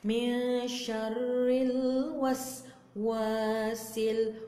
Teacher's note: Min syarril wasil. Wa tu adalah mat asli ataupun mat tabi'i ataupun mat dhati. Artinya ia dibaca 2 harakat, bukan 4, bukan 5, bukan 6, bukan 10. Ia dibaca 2 harakat.